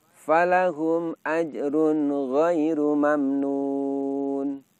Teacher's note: Di situ terdapat ro berharokat dhammah tanwin bertemu dengan ghain, di mana ghain adalah huruf yang makhrajnya ada di tenggorokan. Di situ kita membunyikan tanwin hanya dengan sedikit dengung saja. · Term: idhar halqi